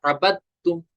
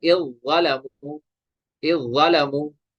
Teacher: तो हम दाल को छोड़ देंगे, बा को डायरेक्ट किसके साथ मिलाएंगे, ता के साथ, ये बनेगा अबद तुम। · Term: इदगाम